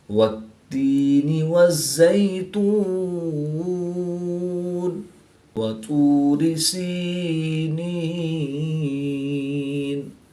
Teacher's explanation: یا مدہ کو ایک الف یعنی 2 حرکات کے برابر کھینچ کر پڑھیں گے اور یا لین کو لمبا نہیں کریں گے